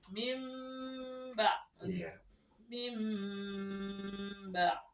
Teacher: ketika ada nun sukun bertemu dengan ba, maka dia berubah bunyi menjadi mim. Jadi tidak dibaca min bunyi nun menjadi mim ya.